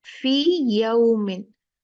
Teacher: फी दो काउंट मद होगी ना ये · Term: मद्दे तमकीन